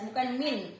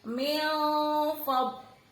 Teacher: Wa antum min fadlihi, nun sukun ketemu fa, ditahan dulu 3 harokat sambil disamarkan. N-nya tidak boleh jelas, bukan min tapi min fad. Bibirnya siap mau bilang fa. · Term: ikhfa